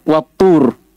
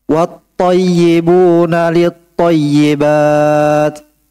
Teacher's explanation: Yang ada itu tasydid di ta. Maksudnya apa? Jangan dibaca lamnya. Langsung baca ta. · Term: Syamsiyah